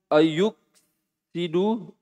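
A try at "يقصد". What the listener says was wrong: Yaksu. Kenapa na yu? Yaksu.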